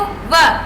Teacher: व दांत है वो होठों के अंदर की साइड में टच कर रहे हैं। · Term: दंतोष्ठ